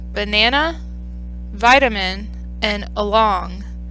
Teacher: banana has a schwa and the first and last syllable vitamin in the second syllable and along in the first syllable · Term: unstressed schwa